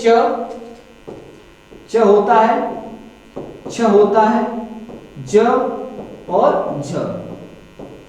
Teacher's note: ये चार आपके क्या होते हैं स्पर्श संघर्षी व्यंजन होते हैं